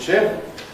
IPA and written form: ʃɪp (ship)